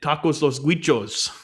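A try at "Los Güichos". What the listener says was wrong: I don't think you pronounced the G.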